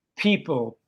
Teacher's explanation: the P in people or person in English has a strong blast of air. So if I have a piece of paper in front of my mouth and I say any of these words in English, people, you can see it move. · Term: aspirated